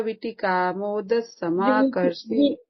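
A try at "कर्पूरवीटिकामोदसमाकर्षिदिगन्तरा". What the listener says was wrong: वो वीट को long pronunciation, वीट। कर्पूर वीट।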